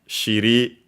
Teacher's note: Shiri on its own, accent on the last syllable.